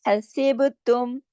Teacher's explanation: सिर्फ बा पे कलकला होगा, बाकी सब बारीक पढ़े जाएंगे, जमाओं के साथ पढ़े जाएंगे।